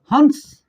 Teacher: इस तरह से अगर मैं कहूं हंस, ये चंद्रबिंदु वाला अंश लगा दे तो हमारे नाक और मुंह दोनों से आता है। इस अंक को बोलते वक्त क्या होगा, हमारे नाक और मुंह दोनों से आवाज आती है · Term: अनुनासिक स्वर